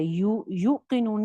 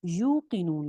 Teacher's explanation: واؤ مدہ, اس کو ہم جھٹکے سے نہیں پڑھ رہے